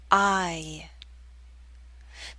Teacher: there's a slight Y sound, y, that makes the glide possible